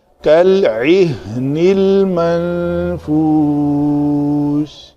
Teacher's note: عین کا مخرج وسط حلق ہے